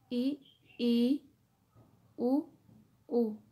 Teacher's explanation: संवित्र स्वर उन स्वरों को कहते हैं जिनके उच्चारण में मुख द्वार लगभग बंद रहता है